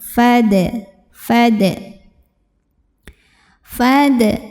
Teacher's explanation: Hamzah wasal itu kalau di tengah tidak dibaca ya Kalau di awal baru dibaca jadi ini fa-nya tetap pendek · awal baru dibaca jadi ini fa-nya tetap pendek fad fad fad ada Qalqalah Sugra karena ada huruf Qalqalah yaitu Dal yang sukunnya asli dan ada di tengah bacaan cara membacanya dipantulkan · Qalqalah yaitu Dal yang sukunnya asli dan ada di tengah bacaan cara membacanya dipantulkan dalnya dengan pantulan yang yang kecil